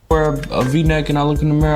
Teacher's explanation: When the R sound at the end of a word, it's dropped. You can hear that in how he says mirror as mirror.